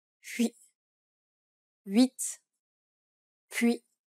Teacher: This is like a Y sound, but with rounded lips. Try saying y while rounding your lips.